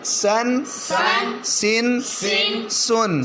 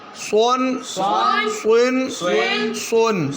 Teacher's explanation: سین کی آواز باریک ہے اور سواد کی مستعلیہ پر ہے